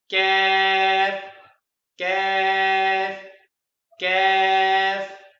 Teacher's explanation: The letter Kaf comes out when the lower back portion of our tongue touches the top of the mouth as Kaf, Kaf, Kaf.